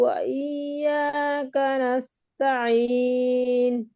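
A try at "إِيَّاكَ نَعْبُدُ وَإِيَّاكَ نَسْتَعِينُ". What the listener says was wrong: আচ্ছা, এই অনেক অধিকাংশের এটা দেখা যাচ্ছে যে ইয়াকা মানে না আবুদুটা ধরতে গিয়ে কাটা একটু টান মতো হয়ে যাচ্ছে, দীর্ঘ। পুরোপুরি একালিফ হচ্ছে তা ঠিক না, তবে হরকতের উচ্চারণ যে তাড়াতাড়ি, সেই তাড়াতাড়িটা আর হচ্ছে না। তাহলে এরকম হবে ইয়াকা না'বুদু, কানা, ইয়াকা না'বুদু ওয়া ইয়াকা নাস্তাঈন। তবে এই যে না বুধু, এই নুন, না, না বলতে গিয়ে যাতে টান মতো না শোনা যায়, না যাতে না শোনা যায়।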